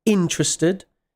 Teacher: notice the stress, interested. It's on the first syllable, interested, not interested.